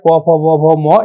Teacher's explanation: এগুলো হচ্ছে ওষ্ঠে উচ্চারিত হয়